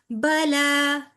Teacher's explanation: لام بھی کھڑی زبر کے ساتھ 2 کاؤنٹس لمبا ہوگا